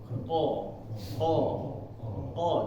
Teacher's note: Pak lidah lidah habis itu kita mengucapkan huruf qo nah ini lidah belakang ini bagian paling belakang paling akhir itu seperti naik sedikit ke amandel qo qo qo jadi kayak ada yang menutup di sini oo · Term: huruf qaf